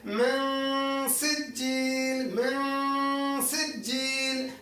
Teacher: ہم ناک میں آواز لے کر جائیں گے کیونکہ نون ساکن کے بعد سین آیا اور سین حروف حلقی میں سے نہیں ہے، تو ہم من سجیل۔ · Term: غنہ